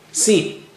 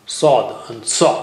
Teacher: You break the first cup and put it on the top of second cup and you get Saw. Sin was thin, nice. And saw is thick, very thick and high sounding.